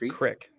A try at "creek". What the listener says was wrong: It's not crick. It's creek. There is no I.